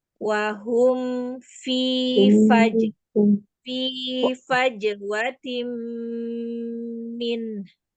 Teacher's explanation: Hati-hati makhraj fa. Bibir bawah bagian dalam bertemu dengan ujung gigi seri atas